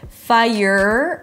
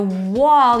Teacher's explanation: For the R, the tongue is up, fire, and for the wall, your lips are rounded, but the tongue is down.